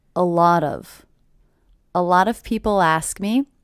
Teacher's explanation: I also notice that I hear these 3 words as one unit. A lot of, with the stress happening on the middle word.